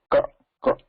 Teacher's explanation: When you say ka, ka, there should not be any vibration felt there.